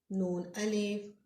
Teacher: आपकी ज़ुबान दांतों की मसूड़ों के साथ लगे